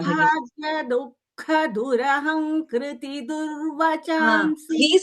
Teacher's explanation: There is Du and there is a Jihva Muliya and then Ka Mahaprana.